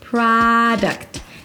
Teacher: The primary stress is on the first syllable PRAA. There is no O so it's not PRO-duct but an open ah sound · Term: open A sound